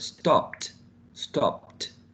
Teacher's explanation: because p is voiceless, we add a t, which is also voiceless. So every time you find a verb that has a voiceless consonant sound, you have to add a t.